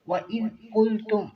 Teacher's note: وَإِذْ قُلْتُمْ ذال کو نرمی کے ساتھ قاف کو موٹا کریں گے